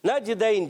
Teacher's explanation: جیم میں ہو رہا ہے قلقلہ